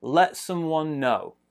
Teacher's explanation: let small stress there bigger stress is on no you notice here i'm putting two circles this circle small stress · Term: main stress